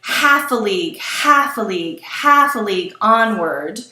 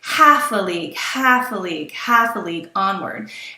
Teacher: three dactyls followed by the trochaic foot it sounds like horses hooves